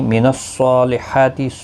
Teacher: صاد اور حا کے اوپر کھڑی زبر ہے، دونوں کو ایک ایک الف کی مقدار کے برابر کھینچیں گے۔ صاد مستعلیہ ہے، پر پڑا جائے گا۔